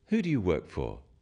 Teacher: use a falling tone it sounds friendlier